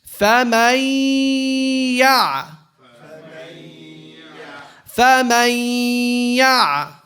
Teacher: You drop the noon. You go from the meme fatha to the ya and you give it a nasalization. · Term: Idgham